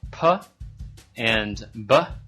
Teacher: are produced by the lips at the front of the mouth